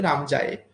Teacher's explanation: কিন্তু যেটা আমরা ভাঙতে পারলাম না, অর্থাৎ যেহেতু এটা প্রশ্নবোধক চিহ্ন ছিল এই বাক্যটার মধ্যে রাম যায়, তাই যখন আমরা সেটা উচ্চারণ করছিলাম খেয়াল করে দেখবো যে প্রথম অংশটা যখন বলছি রাম, সেখানে আমরা যতটা জোর দিচ্ছি তার থেকে অনেক বেশি জোর দিচ্ছি যখন আমরা বলছি যাই। এই যে জোর দেওয়া হলো, এই যে বাক্যের প্রবাহ, অর্থাৎ সুরটা এইরকম প্রথমে একটু নিচে ছিল, তারপরে সেটা ওপরের দিকে উঠে গেল।